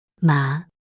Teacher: Second tone, rising, like asking a question.